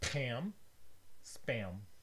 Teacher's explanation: when there's an s before the p you don't get an aspiration